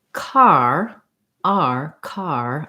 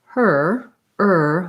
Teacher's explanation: if i'm saying car r car i want to feel that the tongue is lifting and gliding during that r sound